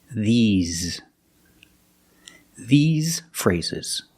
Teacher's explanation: S makes a Z sound, like zebra. Z. You have a voice, you have vibration.